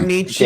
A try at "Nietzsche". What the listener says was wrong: It's not that's not a hard E on the end of that name.